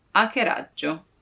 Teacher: it's not hack, but hackeraggio, because the H is always silent in Italian